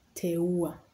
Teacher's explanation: So as you can see from the above examples, Swahili has lots of sequence of vowels, and in each case, each vowel is realized as a separate syllable and pronounced clearly and distinctly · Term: three vowel sequence